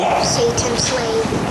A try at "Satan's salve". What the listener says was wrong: No, Satan's salve. Salve, S-A-L-V-E. You said slave, S-L-A-V-E, but that goes along with it, doesn't it?